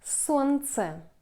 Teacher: We ignore l. We don't pronounce l.